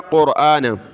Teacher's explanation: حمزہ کے اوپر کھڑا زبر ہے، ایک الف کی مقدار کھینچا